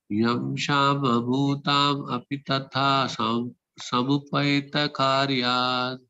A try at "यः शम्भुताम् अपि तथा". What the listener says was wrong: విడగొట్టుకోండి ఈ వర్డ్ ని యః శంభుతాం అది శాంభుతాం కాదు శమభూతాం కాదు శంభుతాం శంభు